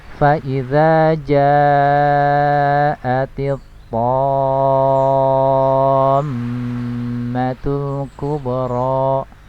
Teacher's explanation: di sini ada mad tabi'i bertemu dengan huruf yang bertasydid dalam satu kata, maka ini dihukumi dengan mad lazim kalimi mustaqqal ya, dibaca dengan panjang 6 harokat